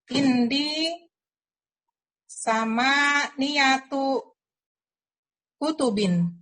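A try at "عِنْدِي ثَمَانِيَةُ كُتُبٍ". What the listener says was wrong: Masya Allah. Lancar Ibu, bagus sekali.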